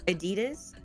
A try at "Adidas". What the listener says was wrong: It sounds like you're saying a Jesus. Adidas. Adidas.